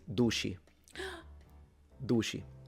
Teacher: the C in the Palermo area is usually pronounced with a sh sound when it's followed by a vowel. This does not happen in central Sicily, and as far as I know, it doesn't happen in eastern Sicily either.